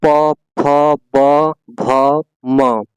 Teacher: देखिए ओठ से बोला जा रहा है कि नहीं दोनों ओठ आपस में चिपक रहे बोलने में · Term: प वर्ण